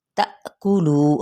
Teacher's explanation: हमज़ा साकना पे झटका देंगे